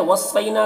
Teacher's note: वलक़द क़ाफ को पुर पढ़ेंगे, दाल में कलकला करेंगे। वस्सैना सौद को पुर पढ़ेंगे, हुरूफ मुस्तालिया में से है, यहाँ पर यालीन है, इसे नर्म आवाज़ के साथ जल्द पढ़ेंगे।